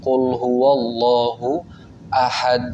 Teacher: Jadi ahad nggak ada pantulannya